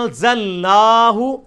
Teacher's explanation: لیکن عربی میں اس کو انزلناہ نہیں پڑھا جائے گا بلکہ پڑھا جائے گا انزلناہ. یہ جو غنہ کیا جا رہا ہے اخفا کر کے پڑھا جا رہا ہے، خفی کر کے آواز کو پڑھا جا رہا ہے، اس وجہ سے کہ نون ساکن کے بعد زا ان 15 حروف میں سے ایسا حرف ہے کہ اگر یہ آ جائے تو یہ الفاظ پھر آن بنے گا.